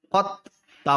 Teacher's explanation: ٹھیک ہے، مطلب ہجے کرتے وقت تو پڑھیں گے لیکن جب روا کریں گے تو قط پڑھیں گے، دال کو چھوڑ دیں گے کیوں دال ساکن ہے اور تا مشدد ہے تو تا کو پڑھیں گے، دال کو نہیں پڑھیں گے.